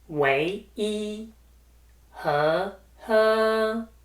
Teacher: Wai is the second tone, followed by the first tone, E.